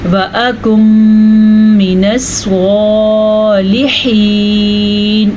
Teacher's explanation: سواد کو ہم نے پر پڑھا کیونکہ سواد حروف مستعلیہ میں سے ہے۔ ہا کے تلفظ کا ہم نے دھیان دینا ہے، صالحین نہیں پڑھنا آپ نے۔